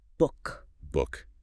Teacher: B for two lips and stop because you momentarily stop the air flow. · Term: bilabial stop